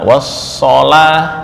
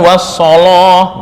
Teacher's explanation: wassalah la tipis, bukan wassaloh, beda ya. Ntar beda imam lagi.